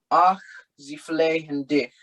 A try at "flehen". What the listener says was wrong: The H is not pronounced. Flehen. Ach, sie flehen dich.